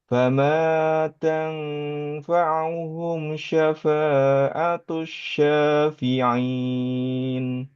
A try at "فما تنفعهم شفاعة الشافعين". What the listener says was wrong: Am u tadi kurang sempurna. Fama tanfa'uhum uhum.